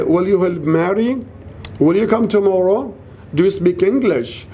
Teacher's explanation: it ends with rising intonation